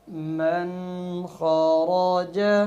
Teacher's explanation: اب نون ساکن پہ غنّہ نہیں ہوا کہ نون ساکن کے بعد خا، حروف حلقی میں سے لفظ خا آ رہا ہے، اس لیے غنّہ نہیں ہوا